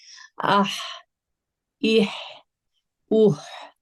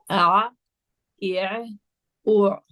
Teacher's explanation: وسط الحلق سے بھی 2 لیٹرز ادا ہوتے ہیں، ح اور عین. دونوں کا مخرج ایک ہے، بس پروناؤنسیشن لیٹر کیونکہ الگ ہے.